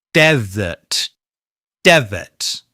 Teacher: We stress the first syllable and then use the weak vowel sound, the schwa, in the second syllable.